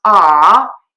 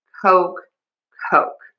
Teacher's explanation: So to say the word Coke, you need to move your mouth for the O. It doesn't just stay open. It's not ah, it's O. We move to a pucker.